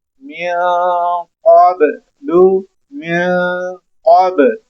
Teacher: قاف موٹا کلکلے والا قاف ہے، موٹا پڑھیں گے ہم یہاں اس کو